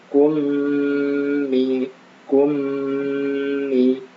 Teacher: mim sukun bertemu mim. Nah, maka idgham mimi ya. Maka ditahan.